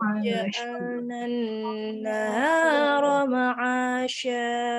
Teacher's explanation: Ronya tidak panjang, bukan naharoma, salah.